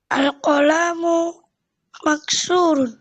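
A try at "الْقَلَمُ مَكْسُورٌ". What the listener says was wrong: Lamnya enggak boleh panjang ya.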